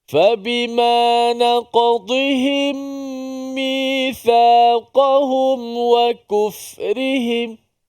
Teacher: huruf dad ni makhrajnya tepi lidah kita, tepi lidah kita diangkat ke gerham atas. Sama ada kanan ataupun kiri ataupun kedua-duanya.